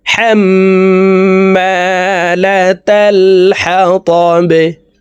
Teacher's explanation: বাকে নিচের দিকে ধাবিত করে ধাক্কা দিয়ে সাকিন করতে হবে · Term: কলকালার হরফ